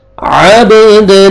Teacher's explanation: با قلقلہ double sound آئے گا, عین کو اپنے مخرج سے ادا کرنا ہے.